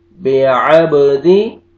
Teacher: با پہ قلقلہ، double sound ہے